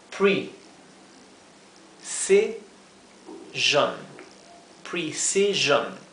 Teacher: Fíjense que la E suena más como una I que la I, porque esto es pre y luego es C.